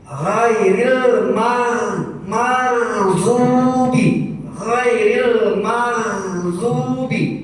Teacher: Ingat, jangan tafhim, tapi harus tarki karena ro-nya kasroh. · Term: ro tarki